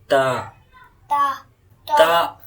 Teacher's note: Okay, so the tip of the tongue touches upper teeth.